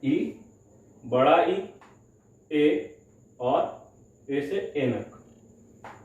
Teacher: अग्र जो स्वर होते हैं उनमें जीभ के अगले हिस्से का प्रयोग किया जाता है। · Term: अग्र स्वर